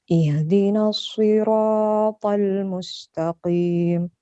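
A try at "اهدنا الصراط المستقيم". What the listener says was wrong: Rohnya agak kepanjangan. Ihdinas siratal mustaqim.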